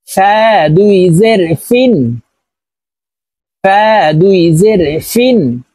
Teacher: দুই জের গিন ফা দুই জের ফিন ফা উচ্চারণ করার সময় উপরে এর দাঁত নিচের ঠোঁটের পেটের সঙ্গে লাগিয়ে উচ্চারণ করব